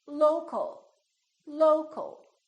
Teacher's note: we reduce the second syllable and it becomes the uh